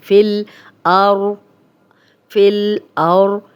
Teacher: جزم والا حرف جو ہے پچھلے زیر زبر پیش کو اپنے حرف کے ساتھ ملاتا ہے. فا کی زیر لام سے ملے گی